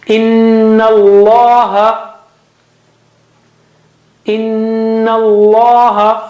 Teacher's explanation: Also in the word Allah, the first lam is not read because it has no sign, no sound.